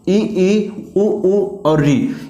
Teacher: जिन स्वर वर्णों को बोलने में हमारा मुख कम खुलता है तो उसको हम बोलते हैं संवृत्त स्वर